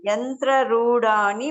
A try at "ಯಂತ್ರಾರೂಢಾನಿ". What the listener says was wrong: ಯಂತ್ರಾರೂಢಾನಿ ದೀರ್ಘಗಳು ನೋಡಿ.